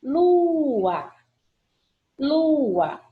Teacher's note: Aparentemente, eu penso que eu tenho um ditongo, mas quando eu faço a separação silábica, eu percebo que as vogais ficam em sílabas separadas. Portanto, eu tenho hiato.